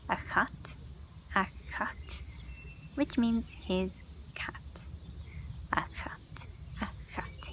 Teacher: Then we have CH. When C takes a séimhiú, it has a th sound, like a kind of a KH sound.